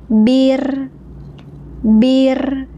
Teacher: getarannya ada di bagian akhir, seperti bir